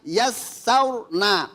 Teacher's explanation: di sini ada ro ro diiringi oleh harakat fatah atau dom atau dom. Maka di sini dibaca namanya tafhim.